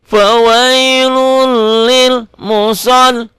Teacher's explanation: Li-nya panjang cuma mad tabi'i doang, satu alif dua ketukan.